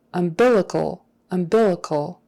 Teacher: the accent is on that second syllable